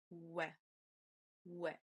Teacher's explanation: As you can see, the lips are round and we pronounce it as we.